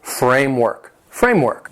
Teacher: The word has 2 syllables and the stress is on the first syllable.